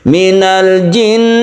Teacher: kita panjangkan nun yang bertasydid ini karena dia gunnah musyaddadah